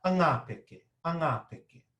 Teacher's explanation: We get a little bit of breath, we get a little bit of sound out before we try and attack that vowel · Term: adding a vowel